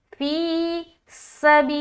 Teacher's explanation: आगे फी सबीलिल्लाहि, फाया ज़ेर फी, या साकिन और उससे पहले क्या है, ज़ेर है, तो यहाँ पर क्या करेंगे, या मद्दा करेंगे, एक अलिफ की मकदार के बाकदर खींचेंगे